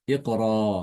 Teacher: kata iqra dibacanya iqra. Dia dibaca mad dua harakat ya. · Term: mat dua harokat